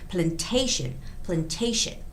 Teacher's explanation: the word plantation has the stress on A, the second A